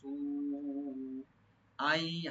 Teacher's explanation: মাই ইয়ামাল, নুন সাকিন পরে যেহেতু ইয়ার সেখানে ইদগাম উইথ গুন্না, মাই ইয়ামাল, ইয়ামাল আইনটাকে একটু রাইট দিবেন। সু আই, সু এখানে মধ্যে মুত্তাসিল, চার আলিফ পর্যন্ত টানতে পারবেন